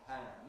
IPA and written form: pʰæn (pan)